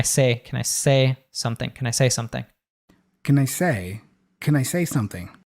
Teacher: he reduces can to Kin